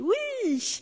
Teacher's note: Parce que l'intonation monte et que la voyelle est allongée.